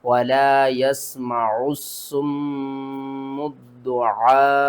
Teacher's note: قرآن پاک میں میم مشدد جب بھی آ جائے تو اس کو ہم غنّے کے ساتھ پڑھتے ہیں، یہاں پر آپ نے غنّہ کرنا ہے۔ اور عین کے اوپر دیکھیں تو بڑی مد ہے، اس کو آپ نے 5 الف کے برابر کھینچ کر پڑھنا ہے